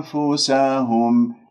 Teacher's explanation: حيز مخرج الفاء اللي هو الثنايا العليا إلى باطن الشفاء السفلى. أنفسهم، لا تقولها لقد قفلت الشفاء وكأنه صار أو حسستني بأنه صارت ميم، هذا خطأ.